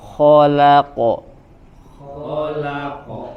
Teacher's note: Kho tebal, la tipis, qaf tebal.